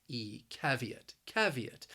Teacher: might not think that it has three syllables but it does that second syllable has a long e sound